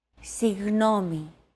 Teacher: try to pronounce a g as if an H sound were to follow after it and hold that sound while you exhale the after sound created by that H is what you're looking